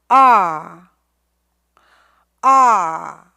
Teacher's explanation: 자유롭게 되진 않을 거예요 근데 아라고 한번 해 볼게요 아 아 혀의 뿌리가 뒤로 들어가요 아 아 오케이 여러분들이 혀를 잘 이용하고 있는지를 한번 확인해 보겠습니다